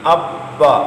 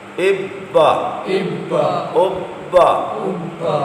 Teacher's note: با حروف قلقلہ میں شامل ہے جماؤں کے ساتھ ادا کریں گے